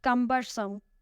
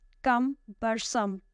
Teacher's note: It has 3 syllables and the stress is on the first one.